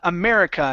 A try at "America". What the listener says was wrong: give me a good R America no no rolling air